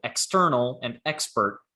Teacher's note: So if the sound after it is voiceless, then we pronounce X like X. So external and expert are voiceless combinations because the sound after it is voiceless